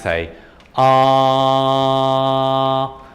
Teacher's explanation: my vocal folds are buzzing away opening closing very rapidly it's around 110 times per second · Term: buzzing sound